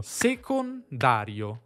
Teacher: Sé — accento secondario, dà — accento primario.